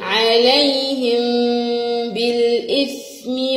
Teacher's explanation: الباء هتخفي الميم، عليهم بالإثم